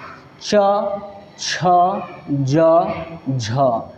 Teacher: तालव्य अर्थात की जिसका उच्चारण तालू से हो